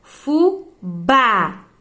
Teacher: A última sílaba é a tônica, portanto, é uma oxítona